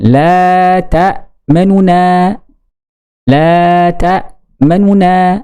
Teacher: ketika ar-raum al-ikhtilas, nunnya itu sebagian harokat, maka agak cepat la ta'manuna, itu namanya ar-raum al-ikhtilas, dan terdengar oleh posisi terdekat guru kita.